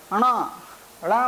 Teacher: णा, णा बोल रहे हैं तो भी नासिका के माध्यम से आवाज आ रही है।